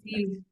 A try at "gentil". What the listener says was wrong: C'est pas N, c'est en. Et le L se prononce pas. Comme the last letter is typically silent. So gentil. Imagine it doesn't exist. Gentil. Comme ça. Ça n'existe pas. Ça n'existe pas. The L doesn't exist. Gentil.